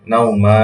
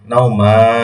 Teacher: আপনার দুই জবর কাটা গিয়ে সেখানে এক আলিফ পরিমাণ টেনে পড়তে হবে